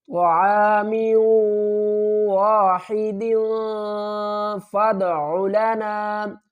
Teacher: زیر میو اور غنے کے ساتھ، علی طعام واحد فادع لنا، فا کو دال کے ساتھ ملائیں گے، فا دال زبر فد، عین پیش رو، دال کے اوپر قلقلہ کریں گے